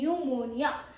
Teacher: Pro tip is PN sounds just like N.